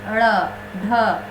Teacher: जिसके उच्चारण में जिह्वा की नोक झटके से नीचे गिरती है · झटका से नीचे आ रहा है जीभ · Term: उत्क्षिप्त व्यंजन